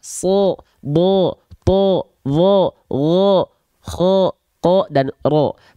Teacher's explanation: Kalau dia huruf tebal, ketika fathah bunyi vokalnya bukan A, tapi bunyi vokalnya adalah O.